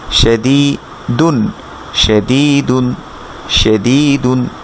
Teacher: কাসরর বামে ইয়া সাকিন হলে আমরা বলেছিলাম এখানে এক আলিফ মাদ হবে, অর্থাৎ টেনে পড়তে হবে।